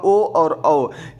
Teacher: ओ और औ ये दोनों कंठ एवं ओष्ठ दोनों से बोले जाने के कारण इन्हें कंठोष्ठ वर्ण कहा जाता है।